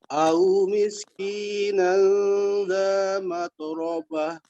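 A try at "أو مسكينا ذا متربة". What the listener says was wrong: Mat, jangan mata. Mat orobah.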